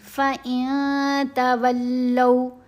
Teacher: نون کی آواز کو ناک میں چھپائیں گے. فَإِن تَوَلَّوْا، لام کے اوپر زبر، ساتھ واو ساکن لین ہے، لو نہیں پڑھنا. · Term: احفا